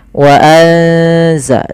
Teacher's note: Ini kita tidak tulis, padahal di sini ada bacaan ikhfa, yaitu suara apa namanya? Suara nunnya disamarkan ke zai. Wa anza, sambil ditahan bacaan eng-nya atau bacaan gunnah ikhfa ya, dengungannya.